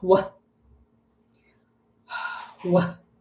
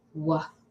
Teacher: many years ago, when they made the W sound, they often put the sound of the H with it.